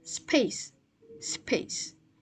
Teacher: The second is p after s that occurs in the middle position preceded by s and unaspirated.